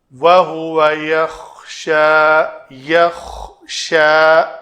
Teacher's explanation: خا کے لیے یہ تھوڑی رگڑ آئے گی اور یہ پر ادا ہوگا